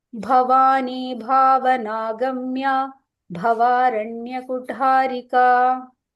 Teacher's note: so all these bhas are Mahapranas, okay, same bha. And this tha is also Mahaprana.